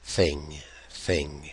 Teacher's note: This is what we normally spell with a th, voiceless, as in thing, thing.